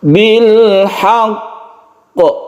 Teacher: Jadi tekan ke qafnya dulu, tahan, kemudian qalqalahkan